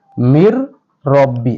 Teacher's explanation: মিলিয়ে পড়তে হবে আর এটি গুন্না ছাড়া শুধু মিলায় পড়তে হবে নুন সাকিনের পরে তাজিম যুক্ত রম এসেছে তাহলে শুধু মিলায় পড়তে হবে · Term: বেলা গুন্না